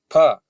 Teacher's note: इसमें हवा ज्यादा निकल रही है और कंपन नहीं हो रहा है, इसलिए अघोष है और महाप्राण है।